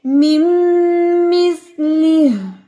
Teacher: ले नहीं पढ़ना आपने इसको, ली पढ़ना है